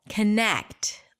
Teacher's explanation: It's the second syllable - conNECT. Longer, louder, higher in pitch. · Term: primary stress